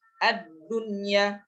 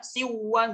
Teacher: Jadi di dalam Al-Qur'an ini ada 4 kata yang memang nun sukun atau tanwin itu, ya, nun sukun bertemu dengan ya, bertemu dengan ya atau waw di dalam satu kalimat, maka tidak dibaca idgham bi gunnah, akan tetapi dibaca idhar mutlak atau disebut juga idhar wajib